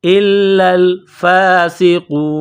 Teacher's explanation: الفاسقون کڑا زبر ہے ایک الف کے لمٹ میں کھینچنا ہے سین میں سیٹی کی آواز پیدا کریں گے سین کو باریک کریں گے قاف کو واو کے ساتھ ملانا ہے قاف کو موٹا کرنا